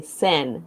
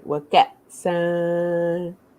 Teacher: So we don't pronounce the noon sound because you see here they're not stacked on top of each other.